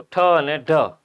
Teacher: જીભ છે એ તાળવા અને દાંતની વચ્ચેના ખરબચડી સપાટી વાળા ભાગે અડે, એ મૂર્ધાના ભાગે અડે એને મૂર્ધન્ય કે વર્તશે વ્યંજન કહેવાય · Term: મૂર્ધન્ય વ્યંજન